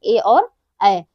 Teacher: ए ऐ जो है ये कंठ और तालव्य से उच्चारित होते हैं। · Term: कंठ तालव्य